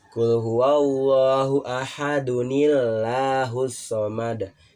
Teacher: kalau kita ingin menyambungkan ayat itu harusnya ada nun iwat. Ya, di situ nunnya yang kecil tapi berharokat kasrah, jadi qul huwallahu ahadunillahus somad.